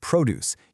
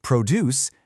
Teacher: If you stress that first syllable, produce, you're talking about fruits and vegetables. But if you stress the second, produce, now it's a verb.